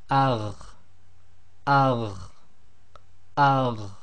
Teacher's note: The top of the throat then is the letter kha and ghain.